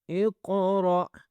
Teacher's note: اب میں نے قاف کو اور را کو موٹا کیا ہے، ٹھیک ہے، ان دونوں کو موٹا کرنا ہے، قاف اور را کو، اور اس کے بعد جھٹکا دینا ہے۔